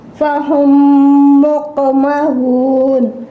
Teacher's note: This Mim will merge into next Mim Mutaharak. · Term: Idgham Shafi